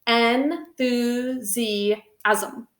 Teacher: The asm is a unique syllable, just like ism, where we actually kind of create an extra vowel sound that's not there.